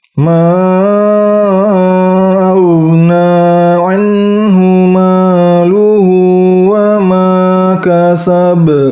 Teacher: qalqalahnya berat karena qalqalah kubra